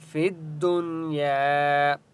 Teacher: فی الدنیا الف مدہ ہے یا کو ایک الف کی مقدار کھینچ کر پڑھیں گے